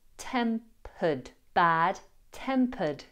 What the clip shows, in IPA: ˈtempəd